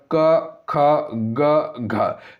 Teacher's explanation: बोलते हैं तो ये क यानी कि कंठी ध्वनि हो जाएगा क ख ग घ ये सभी कंठी ध्वनि के अंतर्गत आएगा